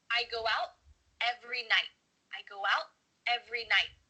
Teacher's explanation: your tongue is at the top of your mouth you're about to make the T sound but no air goes through so it's just stopped at the top of your mouth